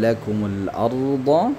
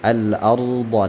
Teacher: ra yang berharakat sukun sedangkan huruf sebelumnya itu ada harakat fathah, maka dia ditebalkan bacaan ra-nya ya. Ra sukun ketika huruf sebelumnya berharakat fathah maka dia ditebalkan bunyi ra-nya ya. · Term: ra tafkhim